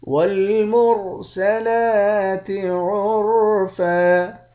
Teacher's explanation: را کو موٹا پڑھیں گے، لام پر کھڑا زبر ہے، ایک الف کے مقدار کھینچ کر پڑھیں گے